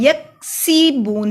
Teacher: سین پہ سٹی کی آواز آئے گی اور یک کو یک نہیں پڑھیں گے، یکسبون.